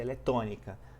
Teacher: o que que é proparoxítona lembrando a antepenúltima sílaba ela é mais forte